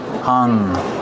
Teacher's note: H- hung. And then the nasal sound for the ng. Hung. No hung. There's no G sound.